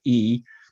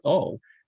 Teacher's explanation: you have front vowels the front of the mouth like e and you have back vowels like oh